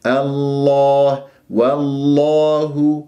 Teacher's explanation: نضم الشفاه في الهاء مع ترقيقها